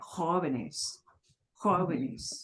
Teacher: punch the jo part of jóvenes